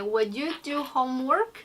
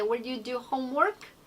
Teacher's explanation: at the ending part, homework, you are going to raise the sound